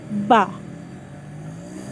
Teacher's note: Ketika membaca ba itu adalah kedua bibir disatukan, ba. Ketika membaca ta, ujung lidah kita di belakang gigi atas, ta.